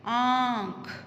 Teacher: इसको बोलने में नाक और मुंह दोनों से आवाज आती है, हवा बाहर निकलती है। इसीलिए इसे अनुनासिक भी कहा जाता है और चंद्रबिंदु भी कहा जाता है।